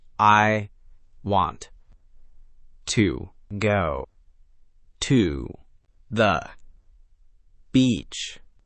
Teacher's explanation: Every word hit with the same weight. This sounds stiff and unnatural. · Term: Robotic equal stress version